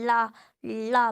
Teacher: बीच में मुड़ने के बाद साइड से हवा निकल जाती है। रा, रा में ऊपर की तरफ जाएगी और हवा के साथ निकलेगी। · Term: पार्श्व